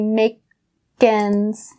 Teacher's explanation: That k from make goes over to ends.